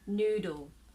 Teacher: have a long sound a vowel ooh noodle say noodle so there is no vowel sound between d and l